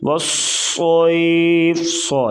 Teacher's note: یا لین نرمی سے پڑھیں گے اور صاد موٹے حروف سے ہے اور سیٹی کی آواز پیدا کریں گے۔